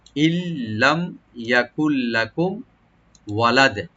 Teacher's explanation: ইল্লাম ইয়াকুল লাকুম, লাম ওপেন তা রাখবেন, আর মিম সাকিন এখানে জাহার করব আমরা, লাকুম ওয়ালাদে, ওয়ালাদে ওয়া ওপেন রাখবেন, লাম ওপেন থাকবে, আর দাল এখানে সাকিন হয়ে যাবে, এবং সাকিন হলে এখানে আমরা কলকলা করে ওয়াকফ করব।